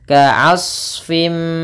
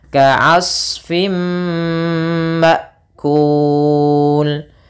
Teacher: Shad ini sama seperti huruf dhad, tidak boleh mantul.